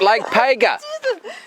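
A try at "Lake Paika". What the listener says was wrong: It's not like Pega. It's like P-A-I-K. No, P-A-I-K for car. No, P-A-I-K-A.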